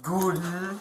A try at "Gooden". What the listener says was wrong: it's not a long O, it's just Gooden. Gooden, yep. That sounds like you're pronouncing it with a German accent, I guess.